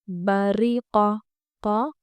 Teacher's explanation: قا پورا آواز کے ساتھ اور آواز اس کی حلق سے آنی چاہیے